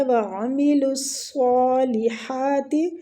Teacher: وعملوا الصالحات، عین وسط الحلق سے